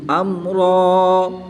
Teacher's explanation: दो ज़बर की तनवीन को वक़फ़ की हालत में अलिफ मद्दा से तब्दील करके पढ़ेंगे। क़ाल बल सव्वलत लकुम अनफुसुकुम अम्रा फ़सब्रुन जमील।